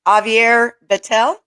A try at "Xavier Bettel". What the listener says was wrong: Xavier Bettel, yeah. pronounce the X, yeah. Yeah, Spanish, yeah. be a J.